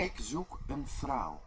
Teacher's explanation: the way it pronounces vrouw, for example, sounded a lot more like it was an F instead of a V